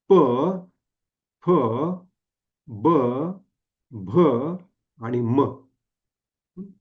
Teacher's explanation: ही पाचही अक्षर ही ओठापासून उच्चारली जातात, म्हणून त्याला ओष्ठव्य म्हणतात किंवा प वर्गीय व्यंजन म्हणतात.